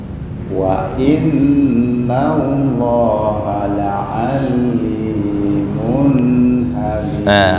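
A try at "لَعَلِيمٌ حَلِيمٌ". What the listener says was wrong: Ali itu kepanjangan. La alimun halim kecuali mau waqaf. La alim. Wa in gunnah. Ya, berarti PR kha.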